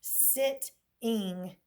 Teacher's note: The accent does occur on sit. Okay, and so with that being said, we have a vowel followed by a consonant, so we have a check mark.